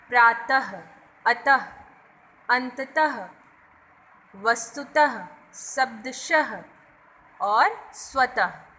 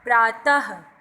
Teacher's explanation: तो इन सभी शब्दों में आप देख रहे होंगे कि त के बाद अंत में 2 बिंदुओं का प्रयोग किया गया है। अब जब भी हम इस तरह के शब्दों का उच्चारण करते हैं तो वहाँ पे हल्की सी ह की आवाज़ आती है। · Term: विसर्ग